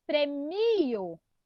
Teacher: Qual que é a mais forte? É o mi.